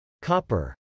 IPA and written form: kˈɑpɚ (copper)